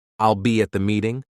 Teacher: But for a statement like, I'll be at the meeting, my tone stays steady.